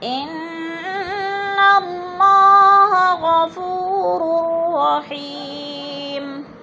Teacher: رحیم، را کو را سے ملا کر ادغام کریں گے. جیسے اور حی پہ یا مدہ ہے، یا ساکن سے پہلے ہا کے نیچے زیر ہے تو یا مدہ.